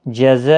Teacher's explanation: یہ جب بھی حروف مدہ، یہ دیکھو ز الف زبر ز الف مدہ ہے، تو جب بھی حروف مدہ کے بعد حمزہ آ جاتا ہے تو مد متصل لگتی ہے، یعنی بڑی مد، جس کو 4 الف کی مقدار کے برابر کھینچ کر پڑھتے ہیں